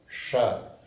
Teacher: Por uma razão específica, como nós temos 3 fonemas chamados sibilantes em sânscrito, Sha, que é esse aqui, Sha, que nós colocamos a língua numa posição retroflexa, um pouco para cima